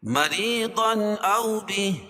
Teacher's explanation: را کے نیچے زیر ہے تو را باریک پڑی جائے گی · مریضا اظہار حلقی کیونکہ تنوین کے بعد حروف حلقی کے 6 حرفوں میں سے حمزہ ہے تو یہاں اظہار ہوگا۔